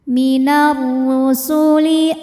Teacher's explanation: Huruf ra dibunyikan secara tafkhim. Sebab ra berbaris dhammah, maka ra dibunyikan dengan tebal